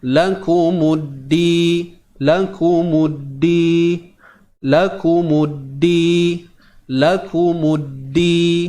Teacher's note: Huruf mim masuk terus pada dal yang bersabdu ini. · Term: Idgham syamsi